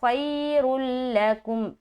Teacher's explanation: را موٹا بھی رہے گا لام سے ملتے ہوئے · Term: ادغام تام